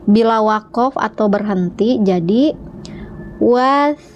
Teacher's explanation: ketika dal berharokat sukun maka harus dipantulkan ya bacanya ya